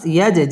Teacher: মিম সাকিন ইজহারে খাস ইয়াজ জিম কলকলার হরফ ধাক্কা দিয়ে পড়তে হবে